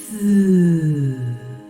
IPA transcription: θ